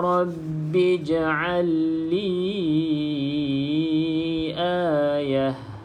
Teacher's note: kalau berhenti pada perkataan Ayah maka ta ni kita bunyikan dia seperti Huruf ha ta ni kena bunyikan seperti Huruf ha bukan berhenti dengan bunyi